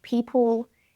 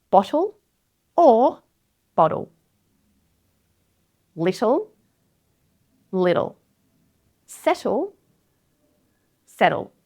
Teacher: Syllabic L. This is just where an L acts as a full syllable without a vowel sound in between.